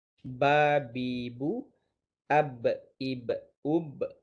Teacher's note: huruf ba keluar apabila bertemunya bibir atas dengan bibir bawah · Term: makhraj bibir